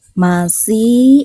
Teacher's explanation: Minal musni, masih, ini ada ya sukun sebelumnya harokat kasroh, dibacanya 2 harokat